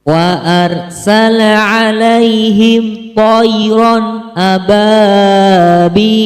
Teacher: Dalam surat Al-Fil ayat ketiga juga terdapat beberapa hukum bacaan, yaitu mad lin karena huruf ya sukun didahului oleh huruf lam berharokat fathah. Cara membacanya adalah dibaca panjang 2 harokat.